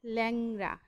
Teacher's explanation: বিবৃত উচ্চারণ আমি প্রথমেই বলেছি, যেটা প্রসারিত, ঠোঁটকে প্রসারিত করে একটু চওড়া করে উচ্চারণ করব, সেটা হচ্ছে বিবৃত উচ্চারণ